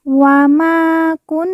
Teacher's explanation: Nun yang bertasdid kita baca ditekan ditahan dua harakat dan didengungkan